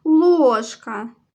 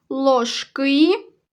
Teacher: ложка наголошений перший склад ложки другий склад